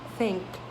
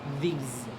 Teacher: think is voiceless and then these is voice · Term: th sounds